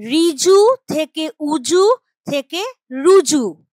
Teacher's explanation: যে র র এর সঙ্গে উটা রয়েছে এই যে ঋ তাহলে শব্দের আদিতে আমরা একটা ব্যঞ্জন ধ্বনি আনলাম এটাকেই বলা হচ্ছে আদি ব্যঞ্জনাগম